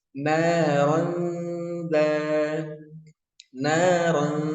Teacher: naronza naronza jangan walaupun itu sudah masuk ikhfa tapi kurang sempurna usahakan didengungkan dua harakat dulu ya disamarkan dua harakat